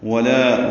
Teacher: وَلَا يَأْمُرَكُمْ أَن تَتَّخِذُوا الْمَلَائِكَةَ الملائكة والنبيين أربابا ولا واو ہنڈکینا تمام گلائی سے ادا کریں گے. لا الف مدہ ہے، لام باریک ہے، 2 حرکات لمبا ہے. یأمرکم میں حمزہ ساکن جھٹکے سے ادا کیا جائے گا.